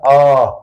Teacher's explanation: आ कहां से निकल के आया कंठ से